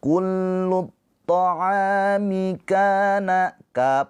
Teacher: dibaca panjang dua harakat karena ada alif sebelumnya harakatnya fathah. Ini adalah mad th'i. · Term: mad thobii, mad tabi'i